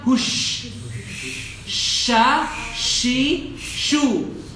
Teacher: Shin itu makhrajnya tengah lidah. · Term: huruf shin